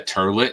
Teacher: A lot of North Jersey puts an R.